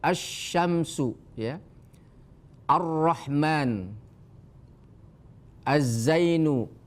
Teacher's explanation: itu Alif lamnya tidak terbaca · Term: alif lam syamsiyah